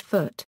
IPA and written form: ˈfʊt (foot)